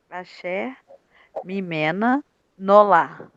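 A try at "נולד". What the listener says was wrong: Nolad, é um Dalet. Nolad.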